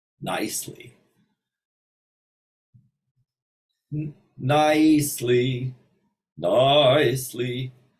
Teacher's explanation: So extend the first vowel on the diphthong. Once again, the diphthong is two vowels next to each other, and you want to elongate the first one.